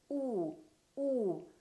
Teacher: For the oo sound, the lips are rounded.